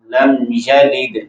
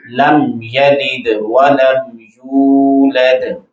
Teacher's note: لم یلد دال میں قلقلہ بھی ہوگا